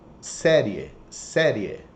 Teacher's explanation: Crescentes eles vêm de uma semivogal para uma vogal. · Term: Ditongos crescentes